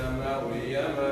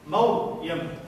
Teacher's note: مريم ومصر هذه الأسماء كلها تفخم قولا واحدا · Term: تفخيم